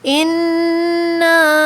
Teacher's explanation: الف خالی سے پہلے جب زبر آتا ہے تو وہ الف مدہ بھی بن جاتا ہے، تو ہمیں اس کو کھینچنا ہے 4 کاؤنٹس